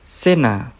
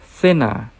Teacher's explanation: Most of Latin America, they pronounce suh. Suh. And in Spain, they pronounce thuh. Thuh.